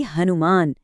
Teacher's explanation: शुरुआत में बस एक सांस से भरा ह जोड़ दे तो ये बन जाता है शक्तिशाली हनुमान।